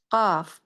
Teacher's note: Huruf qof keluar dari pangkal lidah. Heeh. Dengan langit yang lunak.